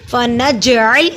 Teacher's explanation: जीम जज़म की सूरत में है, इस पे कलकला होगा